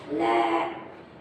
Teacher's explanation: ले यानी कि हमारी जो जीवा है वो दांतों से टकरा रही है और दांतों के भी पिछले हिस्से से, इसीलिए इसको बोलते हैं पार्श्व व्यंजन।